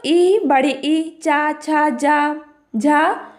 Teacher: ई, बड़ी ई, चा, छा, जा, झा का भी स्थान तालु है